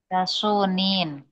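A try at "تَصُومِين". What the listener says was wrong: Ah, dari mana huruf nunnya? Enggak, dari mana huruf nunnya? Kok Anda dengar nunnya?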